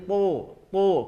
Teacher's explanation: Dia bukan huruf hamas, bukan huruf yang mengalir nafas ketika membunyikannya, berbeda dengan huruf ta. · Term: huruf to